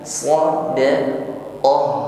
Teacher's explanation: tampakkan sifat huruf h-nya ada Hames ada angin ya nafas dan bunyi huruf h-nya alirkan